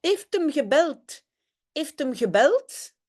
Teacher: on a vu aussi que le H de heeft, on ne l'a pas prononcé · on écrit un D, mais on prononce un T